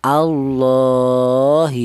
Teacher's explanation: Alasannya matobi ada alif yang didahului huruf yang berharokat fathah, ini diringkas yaitu berupa harokat yang berdiri. Jadi la dibaca panjang satu alif atau dua harokat atau dua ketukan